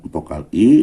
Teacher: Vokal I lidahnya di atas, tapi tetap menjulur ke depan dan tidak bulat.